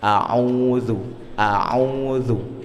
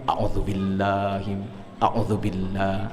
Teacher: Kemudian ainnya setelah au itu ada wau, ya. Harus dipanjangkan 2 harokat.